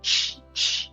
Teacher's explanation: O mineiro, o final T com I, a gente vai usar o fonema ch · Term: característica do mineiro